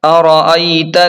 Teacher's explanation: حمزہ کو جھٹکے کے ساتھ پڑھیں اور یا لین کو جلدی اور نرمی کے ساتھ پڑھیں